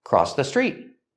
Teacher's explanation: with crossed in the past, we have the T sound. It links to the next word, the. Together, crossed the.